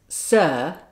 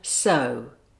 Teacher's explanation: the jaw remains slightly open for sir and closes more for So.